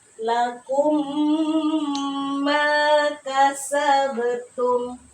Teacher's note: mim sukunnya ya bertemu dengan huruf mim maka cara membacanya diidgamkan dimasukkan kepada huruf mim yang kedua kemudian ditahan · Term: idgham mimi